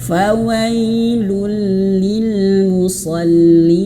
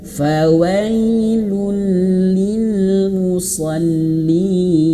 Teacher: Musallin panjang sampai 2 atau enam harakat. Kenapa? Karena di sini ada huruf ya dan nun yang mati karena di akhir kalimat atau ayat musallin sehingga diberikan warna biru muda.